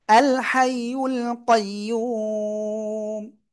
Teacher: الحي القيوم হামজা লাম জবর আল, হাই জবর হাই, ইয়া লাম পেশ ইউল, আল হাইউল, কফ ইয়া জবর কই, ইয়া ওয়াও পেশ ইউ, কইয়ু, মিম পেশ মু, কইয়ুমু। থেমে পড়লে কি সাকিন, তার আগে এক আলিফ মাদ, তাই তিন আলিফ টেনে পড়বো।